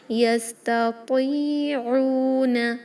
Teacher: تا ایک لائٹ حرف ہے، تو ہیوی لیٹر ہے، حروف مستعلیہ ہے، کسرہ کے ساتھ ہے، پھر بھی ہیوینس ضرور ہوگا تاکہ وہ تا میں کنورٹ نہ ہو جائے۔ یستطیعون، عین کلیئر، حمزہ میں کنورٹ نہ کریں